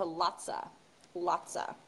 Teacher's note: I feel like I use a lotta more than I use lotsa. And also we'll reduce lots of to lotsa.